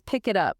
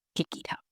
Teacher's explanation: We link them all together by dragging the consonants forward. It literally becomes pick it up. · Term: linking